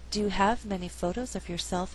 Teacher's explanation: in this example I did not stress the word many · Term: alternate the stress